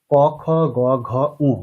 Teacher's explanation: এজন্য এই বর্গের বর্ণগুলোকে বলা হয় কন্ঠ বর্ণ। ক, খ, গ, ঘ, উ প্রত্যেকটি বর্ণেই আমাদের কন্ঠ ব্যবহার করতে হচ্ছে